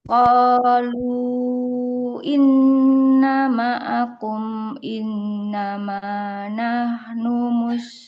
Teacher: Taknya dibaca panjang, ada fathah ketemu alif.